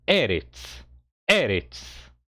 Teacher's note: E este aleph com segol é a sílaba tônica, é a primeira sílaba da palavra